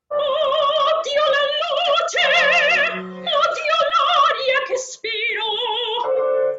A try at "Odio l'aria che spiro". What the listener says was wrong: Not spiro, not spiro, spiro. Because that E vowel makes the orchestra go ba-dam, ba-dam. It's the speed. Spiro, longer, spiro.